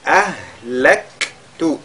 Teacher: le kaf surtout, lui avec al-hams